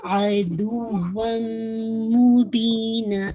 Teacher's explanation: تنوین کے بعد میم ہے تو یہ کمپلیٹ مرجنگ ہے ٹھیک ہے. جسے کہا جائے ادغام کامل ہے لیکن جو غنہ ہے وہ بھی اکمل کیٹیگری کا ٹھیک ہے.